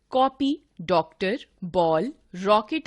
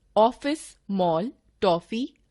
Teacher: कॉपी, डॉक्टर, बॉल, रॉकेट आदि में न तो आ ध्वनि है और न ओ, बल्कि इनके बीच की ध्वनि है। इस आगत ध्वनि के लिए हमने औ वर्ण बना लिया है, जिसकी मात्रा है, जैसे ऑफिस, मॉल, टॉफी आदि।